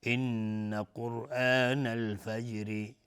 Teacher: ان نونی مشدد دو حرکت غنه میدیم